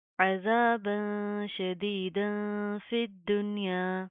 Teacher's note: یہاں پر ہم اخفا کریں گے ناک کے اندر ساؤنڈ پیدا کریں گے.